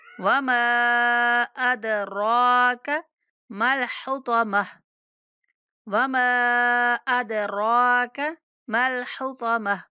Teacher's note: میں ہائے ساکنہ کی آواز آئے گی، فی الحطمہ، وما ادراک، دال پہ قلقلہ کریں گے ، میم کو 3 الف تک کھینچ کے پڑھیں گے، وما